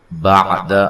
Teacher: عین کو واضح نکالنا ہے، دال کو لمبا نہیں کرنا